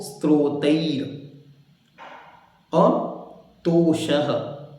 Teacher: सा क्योंकि हलंत है आधा है इसलिए उसको एकदम साइलेंटली बोलकर आगे बढ़ना है।